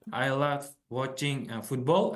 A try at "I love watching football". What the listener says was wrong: The intonation is a little bit off. Sentence, I love playing football. I love playing football. So the intonation is a little bit off. Sentence stress a little bit off.